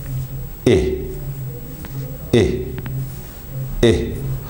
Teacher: Now, my jaw is in a close position. It's not in an open position, it's certainly not in a mid position.